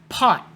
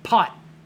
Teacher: So if it's at the end of a word, your tongue touches the top, stops the air, but you don't go T.